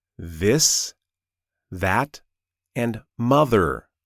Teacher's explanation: The difference is your voice. When you make the sound of the TH in words like this, that, and mother, your vocal cords vibrate. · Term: voiced TH